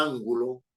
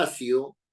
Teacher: Eh, esas palabras evidentemente son esdrújulas porque todas ellas llevan la fuerza de voz, la sílaba tónica en la anterior a la penúltima